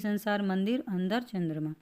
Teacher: इस ध्वनि का उच्चारण नाक से होता है, जैसे कि संसार, मंदिर, अंदर, चंद्रमा। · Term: अनुस्वार